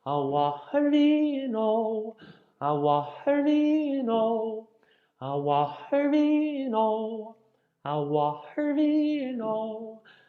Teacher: because the O has a fada, open up on the O.